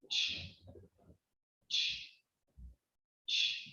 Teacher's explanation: There is no vibration, and that's because ch is a voiceless sound.